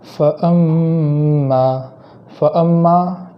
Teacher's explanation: اس آیت کے اندر پہلے کلمے کے اندر حمزہ ہے فَأَ، یہاں حمزہ کو خوب جھٹکا کے ساتھ پڑھیں گے، اور اس کے بعد جو میم ہے اس میم کے اندر تشدید ہونے کی وجہ سے ایک الف کے برابر گنہ کریں گے